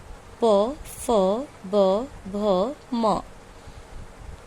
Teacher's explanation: इन सब वर्णों का उच्चारण स्थान है ओष्ठ।